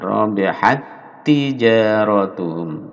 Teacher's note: tak sukun bertemu tak, ini disatukan.